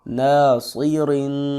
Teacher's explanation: صاد کو موٹا کریں گے، را کو باریک پڑھیں گے